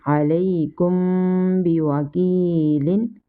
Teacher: After meme sakina here comes ba, that's mean here is ikhfa shafawi and we will do gunna. · And ya madda we stretch equal to 1 second.